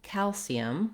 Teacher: looking at the word calcium, we have first syllable stress. Letter A says the A sound, as in at or cat.